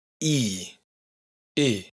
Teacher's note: una I larga que siempre es cerrada y por otro una I corta que siempre es abierta